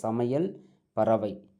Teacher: ஐகாரம் சொல்லின் இடை இறுதியில் வரும்பொழுது ஒரு மாத்திரை அளவு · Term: ஐகார குறுக்கம்